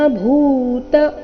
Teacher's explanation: ಇಲ್ಲಿ ಭೂ ಮಹಾಪ್ರಾಣ ದೀರ್ಘ ಬರಬೇಕು